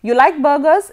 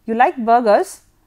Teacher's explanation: You can either say you like burgers in a rising tone or you like burgers in a falling tone. So, there is a difference in intonation there.